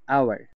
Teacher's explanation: এইচটা আমরা উচ্চারণ করিনি এবং শব্দটি ভাওয়েল সাউন্ড প্রডিউস করেছে। প্রথমে ও আর, আওয়ার, এখানে এইচ কিন্তু সাইলেন্ট ছিল, তাই এখানে আমরা এন বসিয়ে দিলাম। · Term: এইচ সাইলেন্ট